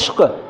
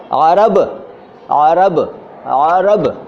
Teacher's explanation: एक उर्दू में भी एन होता है, लेकिन उसका साउंड न नहीं है, न वाला नहीं है, उसका साउंड भी लगभग आ वाला है, आ वाला। लेकिन उसका विकल्प हमारे यहाँ हिंदी में नहीं मौजूद है, इसलिए हम उसको ना बोल पाते हैं और ना सही से लिख पाते हैं, काम चला लेते हैं।